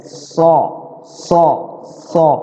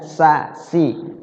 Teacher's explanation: Shad nyentuh dia ujung lidah kita kalau Sin enggak